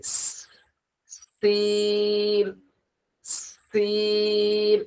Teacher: সিন উচ্চারণ করার সময় আমাদের মুখ থেকে এক ধরনের আওয়াজ বের হবে, এরকম একটা সিটির মতো আওয়াজ বের হবে।